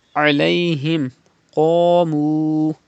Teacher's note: pronounce qaf with thicker voice and stretch waw madda